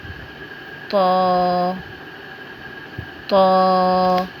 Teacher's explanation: حرف تو کو ادا کرتے ہوئے ہماری زبان کی نوک سامنے والے دانتوں کی جڑ میں لگے گی۔ تو موٹے حروف میں سے بھی ہے تو اس کو تھوڑا موٹا ادا کریں گے۔